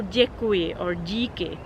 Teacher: It's basically something like D and Y when you try to pronounce it. Very soft D.